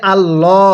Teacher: লামের পূর্বে যদি এরকম জবর থাকে তাহলে আমরা এটাকে আল্লাহ অর্থাৎ মোটা করে পড়বো